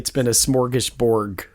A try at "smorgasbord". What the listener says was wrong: No, it's a smorgasbord with a D.